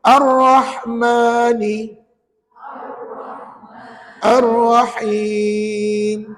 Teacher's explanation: Alhamdulillah jadi puan-puan pastikan nak sebut ra tak payah muncung midir puan-puan hanya tebalkan pada R itu dengan cara melengkungkan belakang hujung lidah ke gusi